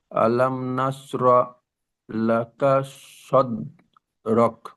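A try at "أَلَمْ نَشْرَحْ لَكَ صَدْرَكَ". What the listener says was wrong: হাকে উচ্চারণ করেন আলাম নাসরহ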